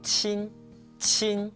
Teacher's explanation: The airflow is stronger than chi. You should feel a gust of air being pushed out when you pronounce it. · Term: qi sound